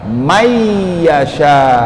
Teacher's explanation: May, suara nunnya dimasukkan ke dalam suara huruf ya.